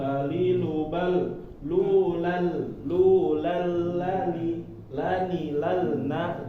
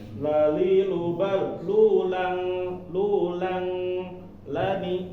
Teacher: ketika tanwin bertemu dengan huruf lam, maka dia idgham bila gunah langsung masuk